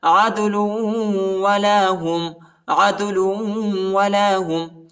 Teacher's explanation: لام کو واو کے ساتھ ملانا ہے، ٹھیک ہے؟ اور غنہ بھی کرنا ہے۔